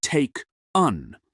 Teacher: In taken, the e is a schwah.